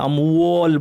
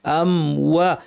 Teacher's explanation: খাড়া আলিফটা খেয়াল করতে হবে, ওয়াওটা পাতলা করতে হবে , অনেকে ভুল করেন আমওয়াল বলে ফেলেন, ওয়াল না, আমওয়া। ওয়ানাকসিম